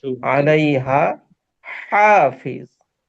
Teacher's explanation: তো দুইটা হার মধ্যে আমরা যখন উচ্চারণ করব, তখন যাতে পার্থক্য করে উচ্চারণ করি, এটা খেয়াল রাখতে হবে। প্রথম আলাইহা, এই হাটা স্বাভাবিক। এরপরে যে হাটা, এই হাটা একটু ওই চাপ দিয়ে উচ্চারণ করতে হবে।